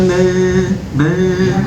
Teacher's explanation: man ketika membaca ikhfa jangan sampai dengung dia. Mang, tapi man, man kita bisa rasakan ketika hidung hidung kita tertutup.